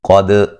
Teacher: قاف کو موٹا ادا کرتے ہیں، دال پہ قلقلہ کریں گے، دال کو ہلا کے پڑھیں گے۔